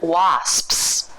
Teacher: So in the mouth, nothing moves. The tongue is in position for the S. When you close your lips, it cuts off the airflow.